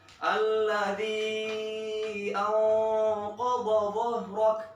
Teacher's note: Ya, qaf, dha dan dha di situ tebel semua. Ketika setelahnya ada huruf h yang hamas dan rakhawah, kalian bisa napas di situ.